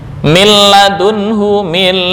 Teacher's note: bacaan ini disebut dengan idgham bighhairi ghunah atau idgham bila ghunah tanpa dengung